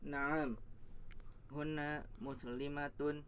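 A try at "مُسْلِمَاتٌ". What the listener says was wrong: muslimatun, maknya panjang. Naam, ya, hunna muslimatun.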